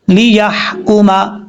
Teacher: یا کے بعد جو ہا ہے یہ ہا باریک ہے، اس کو بھاری ساؤنڈ کے ساتھ نہیں پڑھنا